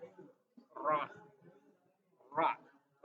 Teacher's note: ujung lidah bergetar saat bertemu langit-langit